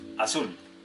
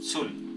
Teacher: Tiene acento en la última sílaba.